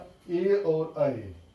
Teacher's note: ए और ऐ का उच्चारण स्थान कंठ और तालु है